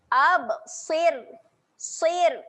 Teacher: Kat sini huruf ra dibaca dengan nipis. Jadi kita kena senyum.